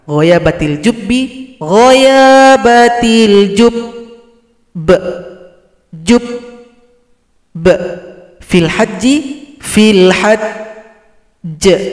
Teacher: Setelah kita tasydidkan, tahan 2 ketukan baru dipantulkan.